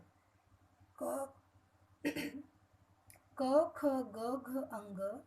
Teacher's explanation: ये ऐसे व्यंजन हैं जिन्हें कंठ यानी गले से बोला जाता है